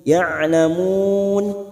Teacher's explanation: Qaumi ya'lamun, ya'lamun, huruf ain ya jangan samakan dengan hamzah. Huruf ain ya memiliki sifat tawasud. Ya'lamun, mun mat arid tulis sukun 4 harakat, kita samakan dengan sebelumnya.